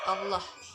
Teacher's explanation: Bunyi yang kesembilan itu a. Rendah, belakang, bulat.